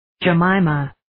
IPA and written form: dʒɛ'mimʌ (Jemima)